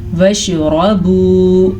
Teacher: را کو پر پڑھیں گے کیونکہ را کے اوپر زبر ہے